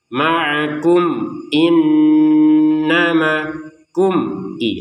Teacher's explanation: antara kum dan i itu jelas enggak ada dengungnya enggak ada samarnya